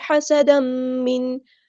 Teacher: سین کی سیٹی ہم واضح کریں گے. ہا کو مستحل لیکن مجھے تھوڑا سے ادا کریں گے.